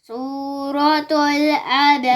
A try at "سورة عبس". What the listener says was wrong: गलत तुल नहीं सूरत अबस